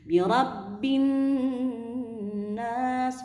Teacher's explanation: Langsung masuk ke nun gunnah ini bertasydid, dibacanya gunnah. Birabbin nas, boleh 2 harkat, 3 harkat sampai 5 harokat.